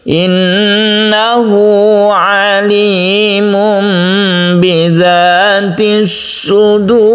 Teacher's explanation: Inilah yang disebut mad silah, lebih tepatnya mad silah qasirah, yang dibaca dengan satu alif atau dua harakat